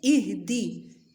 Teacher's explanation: ہا کی آواز بھاری ہوگی، ای اور دی کی باریک ہوگی